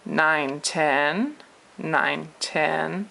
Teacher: So I also want to treat for a second this 9 and this 10 because this is a third tone going into a second tone, and we've already done this before, but because they're together, you would do a kind of a Nike sound with your voice.